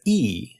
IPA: i